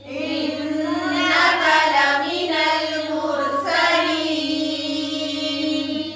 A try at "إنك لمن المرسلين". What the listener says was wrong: إنك کی کاف کی زبر لمبی نہیں کرنی ہے، ٹھیک ہے، اور لمنل لامینل نہیں، لمینل.